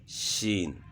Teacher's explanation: شین کی آواز جو ہے وہ اس طرح ہوگی کہ منہ کے اندر آواز پھیل جائے، پست آواز کے ساتھ پڑھنا ہے، شین، سخت نہیں پڑھنا۔